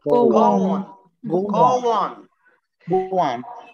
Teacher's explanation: إذا كان الفول الأولاني بيضم البق كده زي كلمة go حضرتك هتزود W من عندك عشان تنطقوا الاثنين مع بعض